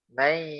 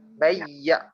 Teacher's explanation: Kita akan rasa getar hidung kita sebab ada suara kat situ. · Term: suara dalam hidung